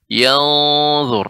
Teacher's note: Kemudian ya pada kata yauma di sini nun sukun ketemu dengan dha, ini merupakan ya hukumnya adalah ikhfa ya, dan dha merupakan huruf isti'la sehingga dibaca dengan tebal yanzur, naiknya suara ke langit-langit